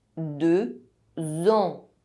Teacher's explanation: There is a liaison between “deux” and “ans”. The consonant X is not silent anymore and it is pronounced with the nasal sound [ɑ̃] that follows. deux ans two years The liaison adds an extra sound: [z].